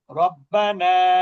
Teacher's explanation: র এর উপরে জবর হলে র টা মোটা করতে হবে। রব্বানা। এখন কেউ যদি বলে রাব্বানা এটা গুনাহগার হবে না কিন্তু পড়াটা যেভাবে পড়ার দরকার ছিল সেভাবে সে পড়লো না।